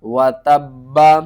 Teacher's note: وقف کریں گے تو با کے اوپر جو زبر ہے یہ ختم ہو جائے گی، با ساکن ہوگا تو با کے اوپر قلقلہ کریں گے۔ اس سے پہلے واو ہے، ادغام ہو رہا ہے، تو با کو ہم واو کے ساتھ ملا کر غنے کے ساتھ پڑھیں گے۔